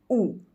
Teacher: જ્યારે આપણે ઉનો ઉચ્ચાર કરીએ છીએ ત્યારે જીભનો પાછળનો ભાગનો ઉપયોગ આપણે કરીએ છીએ